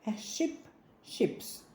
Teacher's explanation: якщо іменник закінчується на глуху приголосну то із додаванням S у множині вона вимовляється як с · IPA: [s]